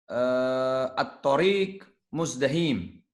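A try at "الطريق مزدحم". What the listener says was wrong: Muzdahim. Ahsanta. Bagus.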